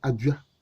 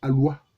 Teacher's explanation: on peut dire que le D est allophone du L.